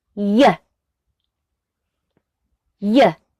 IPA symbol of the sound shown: j